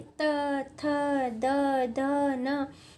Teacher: जीभ बार बार दांतों को टच कर रही है। त, थ, द, ध, न। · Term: दंत व्यंजन